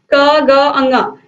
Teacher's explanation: इन व्यंजनों के उच्चारण में हवा अधिक नहीं निकलती है, ठीक है, या सांस का जो बल है वो कम निकलता है, तो इन्हें हम अल्प प्राण व्यंजन कहते हैं।